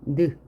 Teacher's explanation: 잇몸 소리이면서 비음인 거